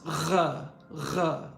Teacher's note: the French R is a fricative. It's r, r.